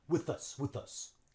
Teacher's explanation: notice how the TH links on with the U.